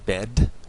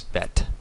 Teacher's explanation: BDG, becomes either a B or a P. The D becomes a T sound.